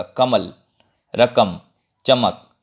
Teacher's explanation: आप बोल के देखेंगे तो ल पूरा ल के साथ अ नहीं सुनाई देगा